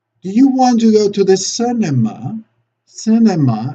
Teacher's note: Cinema, and then we go up, and the last two unstressed syllables, they have to be even, more on the upper pitch.